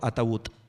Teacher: lento. Siempre acabo diciendo ataúd, porque no hay una D y en lugar de la D ponemos una T glotalizada